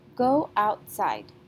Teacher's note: the last syllable sight sounds louder than out side is stressed so let's try that go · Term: stress syllable